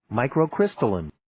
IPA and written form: ,maɪkroʊ'krɪstəlɪn (Microcrystalline)